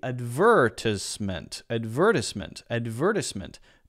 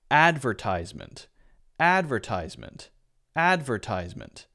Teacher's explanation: so there's an S sound instead of a z sound but I think the important difference there is on the stress